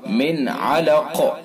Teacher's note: نون ساکن ہے، اس کے بعد عین ہے، حروف حلقی کے 6 حرفوں میں سے اس کے اندر اظہار ہوگا